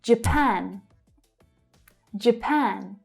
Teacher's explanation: Again, we have the /dʒ/ consonant sound followed by the schwa, which tells us that the first syllable is unstressed.